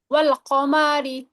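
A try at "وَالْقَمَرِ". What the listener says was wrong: ওয়াল কমারি। আপু মিমে টান হয়ে যাচ্ছে, টান হবে না। ওয়াল কমারি, টান হয়ে যাচ্ছে। ওয়াল কমারি, ওয়াল কমারি। রিল্যাক্স, রিল্যাক্সে বলেন। আচ্ছা, আপনি মনে হয় খুব তাড়াহুড়ার মধ্যে আছেন।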